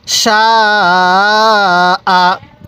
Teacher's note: এই শিনের মধ্যে কয় আলিফ টান হবে? হ্যাঁ, 4 আলিফ টান হবে। কেন? মদের হরফের উপর মোটা চিহ্ন, এরপরে গোল হামজা।